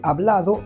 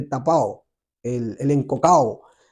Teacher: Este debilitamiento de B, D y G entre vocales están sumamente avanzados en Latinoamérica, en algunos dialectos.